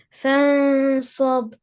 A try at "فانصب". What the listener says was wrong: the ba should have qalqala, please.